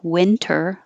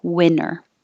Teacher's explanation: the word winter could be pronounced with a T, winter, or without a T, and that would sound just like this, winner.